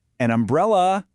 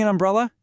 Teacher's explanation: And the answer is, an umbrella, because umbrella starts with that distinct short uh vowel sound